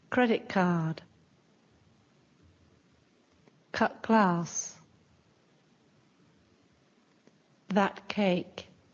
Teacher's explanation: Sometimes the t sounds more like k.